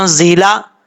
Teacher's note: زا کو سیٹی کے ساتھ پڑھیں گے, حروف صفیریہ میں سے ہے. · حمزہ کے بعد نون ہے, نون کے بعد نون ساکن ہے. نون ساکن کے بعد حروف اخفا میں سے زا آ رہا ہے تو یہاں پہ غنہ کریں گے ایک الف کی مقدار.